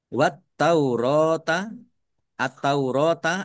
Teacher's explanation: alif lam syamsiyah. Karena tidak dibaca langsung masuk ke huruf berikutnya yaitu ta.